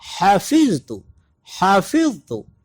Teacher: ہا کا مخرج بالکل سیم اسی طرح جس طرح ہم نے عین کا مخرج پڑھا، یعنی گلے کا درمیان والا حصہ. اپنے حلق کے درمیان سے یہ ادا ہوگا ہا، اور یہ اس کی مختصر شکلیں ہیں. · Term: باریک ہا